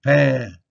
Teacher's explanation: You don't really hear the N. It's a nasal sound